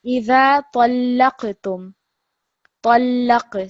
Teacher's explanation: So this lam, when you're joining it with this ta, because it's got a shadda, you're putting extra stress on that letter.